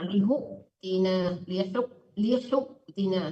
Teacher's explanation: Wa qalu ya salihun salihu Ya Bu ya, matikan amzah, dipentokin matikan amzah ya. Wa qalu ya salihu tina, agak dipentokin biar kedengaran amzah matinya gitu.